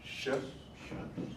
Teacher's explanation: This is pronounced sh, sort of with the tongue against the roof of the mouth. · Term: palatal